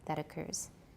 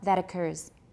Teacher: we're going to link it with a tap